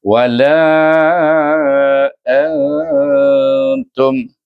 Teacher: Nun itu kita menyembunyikan bunyinya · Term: ikhfa